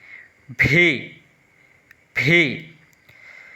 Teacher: ভি ভি একটি বাতাস বের হবে, এটাকে আমরা বলতে কি বড় বি। তো এই ভিটা বলার সময় ঠোঁট দিয়ে দুই ঠোঁটের মাঝখান দিয়ে একটি বাতাস বের হবে